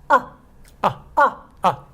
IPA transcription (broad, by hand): ə